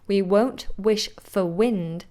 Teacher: Notice how for has become f because it's unstressed.